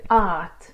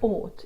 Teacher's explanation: you might say art if you've got an American accent, but ought if you've got an Afrikaans accent